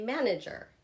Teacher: That first part, man, is emphasized.